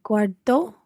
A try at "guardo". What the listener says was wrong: Sì, guardo, watch your stress, your emphasis, guardo.